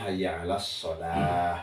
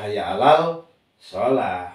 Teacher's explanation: Alif lam syamsiyah wajib idgham. Hayya 'alas shalah bukan hayya 'alal shalah.